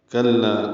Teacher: کلا کاف لام باریک ہیں اور لا الف مدہ مد اصلی 2 حرکات لمبا ہے